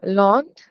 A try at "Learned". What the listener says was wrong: Learned. It's not on. It's learned. Learned.